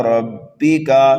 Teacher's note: را کو پر پڑھیں گے، کاف کو جلدی پڑھیں گے